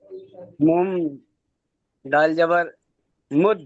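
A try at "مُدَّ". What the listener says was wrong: মিম দাল জবর হবে না। মিমের সাথে, মিমের পরে কি আপনি সাকিন দেখতে পাচ্ছেন বা তাসদিদ দেখতে পাচ্ছেন? ডালটা, ডালটা বাদ যাবে না, মিমটা আলাদা পড়তে হবে, মিমের উপর হারকাত পড়তে হবে।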